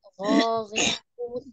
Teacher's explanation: Bukan gho tapi gho. Gho di cekungan lidah. Ghairu. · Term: huruf ghain